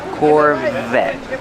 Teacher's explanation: Pronounce the V with voice.